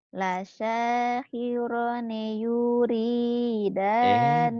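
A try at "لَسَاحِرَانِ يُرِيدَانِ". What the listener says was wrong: blok nu di blok-blok nu panjang. Ninya pendek. Ayo lagi.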